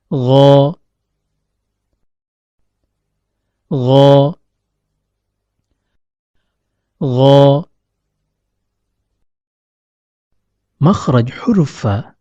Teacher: ketika mengucapkan huruf ghoin lidah tidaklah menempel pada langit-langit lunak sehingga suara tetap bisa keluar melewati rongga antara keduanya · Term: huruf ghain